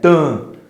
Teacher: Lembra quando a gente estava vendo as vogais e o professor colocou que quando elas estão com o sinal gráfico til, ela tem um som anasalado? A gente fala com o nariz